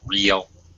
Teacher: it's uh one syllable so a long e a long e sound like sheep